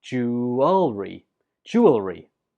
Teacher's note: Both are fine, so you choose whichever one's easiest for you. But it's important to know that you put the stress on the first syllable.